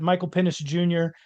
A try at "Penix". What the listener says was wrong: just said you said penis. said penis with like a different inflection on the E. You said penis. Penis? You're saying it with an S. Penix. Penix. It really enunciate that X for me.